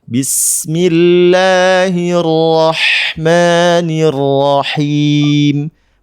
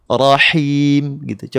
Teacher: Nah, tadi ada Bunda yang kurang tepat pada kata arrahim. Harusnya pakai H yang lebih bening, pedas bunyinya, karakternya berisik ya.